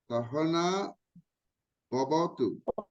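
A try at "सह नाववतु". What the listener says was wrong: There is no Bha there. It is Va. No, not Sahana Vavatu. Sahana Vavatu. Vavatu. It is Sahana Vavatu. It's not Sahana Bhavatu.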